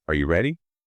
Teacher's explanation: First, rising intonation. We typically use this for yes-no questions. It signals uncertainty or that you're seeking confirmation.